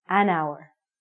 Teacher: this word hour sounds like a vowel, because the H is silent